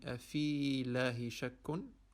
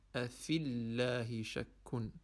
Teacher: We are going to remove or avoid pronouncing the ya.